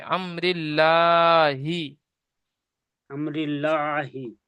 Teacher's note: আল্লাহ শব্দের আগের অক্ষরে জের এসছে, তাই আল্লাহর লামকে বারিক করে পড়তে হবে।